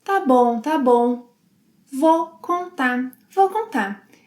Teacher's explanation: drops the final R sound in contar and the final U sound